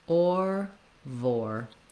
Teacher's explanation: So I suggest building from or. You start with kind of a rounded position and you move to that tight American R. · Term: or diphthong